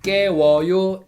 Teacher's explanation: vowel 우 and 어, they are combined in one diphthong 워